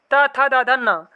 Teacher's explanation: ये दांतों को स्पर्श करते हैं और इसीलिए इन्हें कहा जाता है दंत व्यंजन।